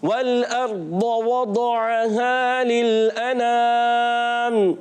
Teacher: दौद को हमने पुर भी रखना है, मोटा भी रखना है, बारीक नहीं करना, मोटा रखना है